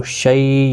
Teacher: یا لین ہے، تھوڑا نرمی کے ساتھ پڑھیں